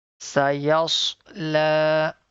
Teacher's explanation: Stretch the lam here because there is a vertical fatha on the top